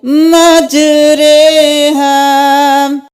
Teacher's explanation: اس کو امالہ بولتے ہیں، رو کو مجہول کر کے پڑھیں گے، نہ زبر پڑھیں گے، نہ زیر پڑھیں گے، تھوڑا ٹیڑھا کر کے پڑھیں گے